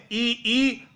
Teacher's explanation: तालू से इ ई च वर्ग और य और श का उच्चारण तालू से होता है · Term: तालव्य